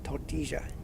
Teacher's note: I know in Spain the double L is like a Y or a soft J.